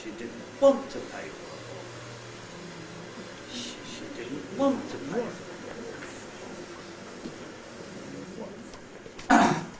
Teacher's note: I've only got one accented syllable this time, and that is the syllable want. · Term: nucleus